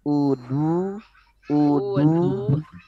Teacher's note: Jadi pastikan si hamzanya itu tipis, huruf dodnya tebal.